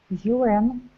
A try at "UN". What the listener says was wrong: Make your W a little bit more round. UN.